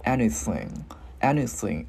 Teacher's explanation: Cái mình ngân cái chữ ng ra